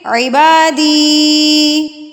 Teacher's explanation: تو جب یہ یا کے اوپر یہ ساکن ہوگی اور اس سے پہلے زیر ہوگی تو اس کا مطلب ہے کہ یا مدہ ہے. آپ نے زیر والے حرف کو کھینچ کے یعنی کہ لمبا کر کے پڑھنا ہے